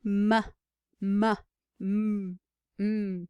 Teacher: airflow is being obstructed in the lips for all of those cases